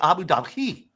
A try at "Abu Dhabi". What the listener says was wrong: That's not where the H is.